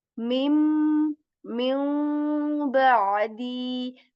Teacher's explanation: Okay, and we say min ba'di. We kind of change the sound of noon sakin, this noon sakin that we are doing, to meme letter.